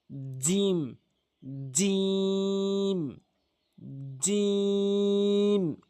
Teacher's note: জিহ্বার মাঝখানের অংশটা উপরের তালুর সঙ্গে লাগাবেন।